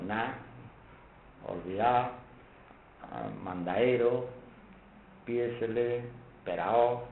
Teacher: la caída de la D intervocálica, es muy típica del andaluz en general